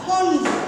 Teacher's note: এখানে দেখো ট বর্গের একটা ধ্বনি হচ্ছে ড, তার সঙ্গে উচ্চারিত হচ্ছে, সেখানে এর উচ্চারণটা খণ্ড। এখানে কিন্তু দন্তন্যর মতন উচ্চারণ নয়, এখানে কিন্তু মূর্ধন্যের মতোই সঠিক উচ্চারণ হচ্ছে।